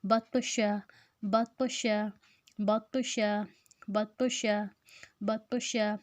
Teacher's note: اب اس میں طا جو ہے وہ حروف قلقلہ ہے، اس میں ہم لفظ کو ہلائیں گے، اور باقی جو ہے وہ دونوں پڑی حرکت ہے، اس کو ہم نہیں کھینچیں گے۔